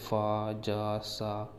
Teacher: संघर्षी की बात करें तो वह व्यंजन जिसके उच्चारण में वायु मार्ग संकुचित हो जाता है और वायु घर्षण करके निकलती है।